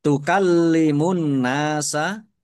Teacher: kafnya dibaca dobel ada tasdidnya ditekan dan ditahan